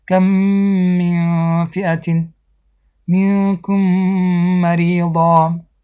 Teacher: میم ساکن است بعدش میم حرکت دار، میم ساکن با میم حرکت دار دخول میشود، میم ساکن خوانده نمیشود، میم حرکت دار با تشدید خوانده میشود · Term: میم تشدید دار